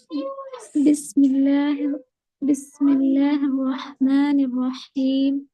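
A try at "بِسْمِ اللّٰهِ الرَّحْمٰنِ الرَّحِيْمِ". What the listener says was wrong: जी अब यहाँ पर देखिए, जब आप रॉ पढ़ रहे हो बिस्मिल्लाहिर्रहमानिर्रहीम, तो आप उसमें सिर्फ जबान को ऊपर टच कर रहे हो, इसलिए जो साउंड है रॉ का वो वाव से सिमिलर हो रहा है।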